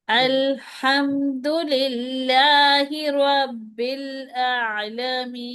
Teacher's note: हा में आवाज को थोड़ा सा रगड़ लेके आनी है आवाज में